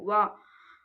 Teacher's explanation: ದಂತ ಪ್ಲಸ್ ಔಷ ಅಂದ್ರೆ ತುಟಿಯ ಸಹಾಯದಿಂದ ಹುಟ್ಟುವಂತದ್ದು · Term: ದಂತೋಷ್ಟ್ಯ